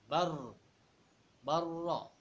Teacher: Takrir ini yaitu getaran, bergetar. Nah, cuman bergetarannya ro ini dibatasi 1 atau 2 getaran. Tidak getarnya itu lama.